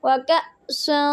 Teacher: تو سین پہ سٹی کی آواز آنی چاہیے آپ کی